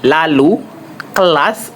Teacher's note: Nah, ini kita kembali lagi ya, yaitu ee yang untuk kali ini dia ujung lidah ujung lidah menyintugusi tidak seperti S tadi ya. Nah, udara keluar dari samping lidah. Udaranya bukan ee keluar udaranya itu keluar dari samping ya, dari kiri kanan. · Nah, lalu yang keenam yaitu ada vokal I, itu lateral apicoalveolar bersuara. Cara artikulasinya, ujung lidah menyentuh gusi. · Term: lateral apoalveolar bersuara